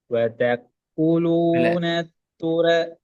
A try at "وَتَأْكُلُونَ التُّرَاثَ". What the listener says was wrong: வதக்குலு நீ காஃபுக்கு சுக்கூனை தான் பிராக்டிஸ் பண்ண பாக்குறீங்க கூட உச்சரிப்பு இல்ல இக்கட சவுண்ட் கொடுக்குறோம் விளங்குதா காஃபுக்கு கூ என்ற உச்சரிப்பை மட்டும்தான் நான் கு என்று கொடுக்க கூடாது அது பில